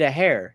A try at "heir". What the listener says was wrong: You always say hair. It's This H is silent. heir